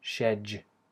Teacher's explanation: other version Begins the way she and then here we have instead of a d a hard D using the tip of the tongue we have a j sound which you have in words like just and hedge